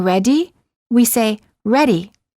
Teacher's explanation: it's the sound made with the tip of the tongue quickly tapping the gumbridge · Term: fast d